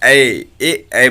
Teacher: ए देखिए कंठ और ताल दोनों मिलकर देखिए ए बोला जा रहा है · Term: कंठ ताल